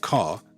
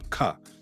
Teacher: Sometimes in Memphis, the R is softened or it's dropped. If you take a word like car, it can become ka. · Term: distinct R usage